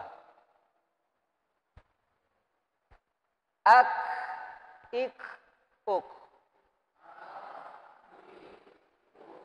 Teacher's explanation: huruf kaf itu tidak boleh sampai dia kas keluar angin terlalu kuat